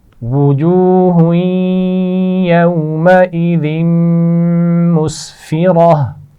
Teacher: وجوہ ہاں پر تنوین ہے, آگے یا ہے, ملائیں گے تو یہاں غنہ بھی کیا جائے گا. یومئذ ذال ہے, نرمی سے پڑھی جائے گی, اور میم پر آگے غنہ بھی کیا جائے گا.